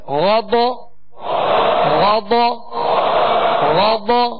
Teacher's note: غین ضاد دونوں حروف پر پڑھیں گے، موٹا پڑھیں گے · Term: حروف مستعلیہ